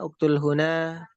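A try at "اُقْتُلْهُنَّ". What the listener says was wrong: Uktulhunna, jelaskan hunna bukan huna.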